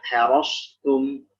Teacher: Maka ketika bersandingan dengan huruf tipis, hati-hati ketebalan shad jangan sampai mengalah sehingga dia menjadi huruf sin